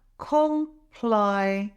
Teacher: The stress is on the second syllable, ply.